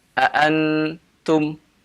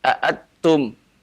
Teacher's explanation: kalau kita baca aantum, nun sangat jelas terdengar. Ini berarti dia membaca dengan condong ke izhar. Jadi kalau antum baca aatum, nunnya dimasukkan ke dalam ta, ini berarti idgham.